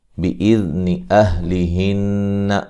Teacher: بِإِذْنِ أَهْلِهِنَّ نون مشدد پہ غنہ ضروری ہے